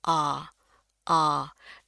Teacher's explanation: Rahangnya juga harus turun. A, A, dan bunyinya sedikit lebih panjang. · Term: A tebal